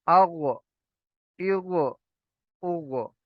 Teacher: ये गईन भी हरफ मुस्तालिया में से है, मोटा पढ़े जाने वाला हर्फ